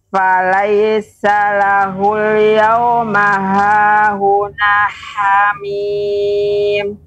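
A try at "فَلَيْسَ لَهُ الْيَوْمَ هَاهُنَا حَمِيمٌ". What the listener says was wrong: Baik, nanya tadi agak nyangkut, agak kurang sempurna Ibu. Jadi baca terlebih dahulu hahuna, nah, dipanjangkan hahuna hamim.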